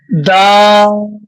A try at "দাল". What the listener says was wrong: জি, মাশাল্লাহ, সুন্দর হয়েছে।